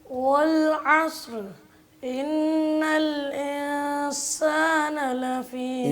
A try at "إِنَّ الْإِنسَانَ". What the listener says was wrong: نہیں پڑھنا ہے، اس کو بریک کرنا ہے.